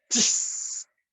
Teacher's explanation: se vocaliza dándole una entonación especial, un sonido silbante, agudo, semejante a aquel que producen los frenos de aire comprimido de cualquier máquina. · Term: la chis